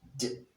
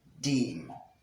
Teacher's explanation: have the second one is d sound the d sound d when you pronounce the sound you also realize that the tip of the tongue is in contact with the alveolar ridge